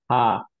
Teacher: এইটা অ্যাকচুয়ালি কোনো জায়গায় টাচই করবে না। সো টাং টাচ করে না কোথাও, লিপস টাচ করে না, কোনো জায়গায় কোনো টাচ নেই।